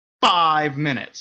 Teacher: I'm really trying to make that F not fricative as much as possible. So I'm trying to keep that air in and letting it shoot out when I finally make the sound. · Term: pseudo-plosive